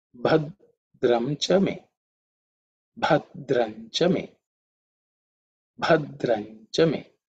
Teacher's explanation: the first letter is Bha, which is the fourth letter in the Pa Varga, so it has to be aspirated. Mahaprana consonant.